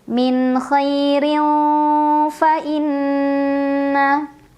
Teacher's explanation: Karena ada tanwin kasrah bertemu dengan huruf fa. Dibacanya samar-samar tanwinnya menuju huruf fa sambil dengung. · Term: ikhfa awsat